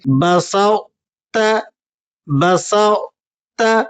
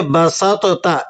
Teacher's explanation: بسط، بسط، بعض لوگ اسے بسطتا اس طرح سے پڑھتے ہیں، یہ ٹھیک نہیں ہے۔ تو کی صرف صفت اطباق باقی رہے گی، لفظ تو کو یہاں نہیں پڑھا جائے گا